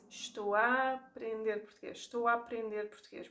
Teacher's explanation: We combine the A's, we make it a very open and slightly longer A